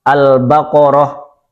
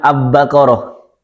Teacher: Al ketemu ba, alnya diizharkan.